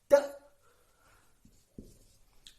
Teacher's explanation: When we say T, that time the flow of air is stopped by the tongue.